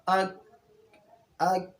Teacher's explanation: مخرج نمبر 6 کاف کا مخرج ہے، اور وہ قاف کے مخرج سے ذرا ہٹ کے منہ کی جانب نیچے ہو کر کے اس سے کاف ادا ہوتا ہے، یعنی قاف کی مخرج سے ذرا منہ کی طرف ہٹ کے اور زبان کو نیچے کریں گے